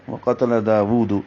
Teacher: داود میں الف مدہ ہے، دا 2 حرکات لمبا ہوگا، واو پر الٹا پیش ہے، یہ بھی 2 حرکات لمبا ہے، ہونٹوں کو گول کریں گے۔